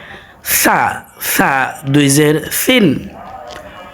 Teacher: সায়ের উচ্চারণ জিহ্বার আগা এবং দাঁতের আগা থেকে হয়